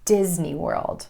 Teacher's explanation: Emphasis for this oh so special place falls on the word Disney and the first syllable